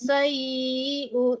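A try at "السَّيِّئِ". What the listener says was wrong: Bukan sayyi'u ya. Kalau mau diteruskan sayyi'i bukan sayyi'u, bukan dhamma, itu ada wakafnya berhenti ya. Wa makras sayyi'. Dipentokin mematikan amzahnya. Biar jelas.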